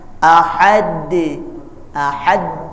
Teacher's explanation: Kalau dal itu asyiddah, sifatnya asyiddah, jadi langsung menutup. Misalnya ahad, ahad, langsung menutup ujungnya.